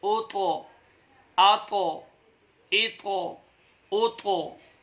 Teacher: ता को मुफ़ख्खम यानी मोटा करके पढ़ते हैं, और इन पर आपने कलकला भी अदा करना है